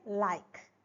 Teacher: L as in like. The tongue tip touches the alveolar ridge, but the air passes along the sides of the tongue. And during this, during the pronunciation of L, the tip and blade of the tongue is slightly moves towards the teeth ridge, and at the same time, both the sides of the tongues are loosely held or is hanging. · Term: lateral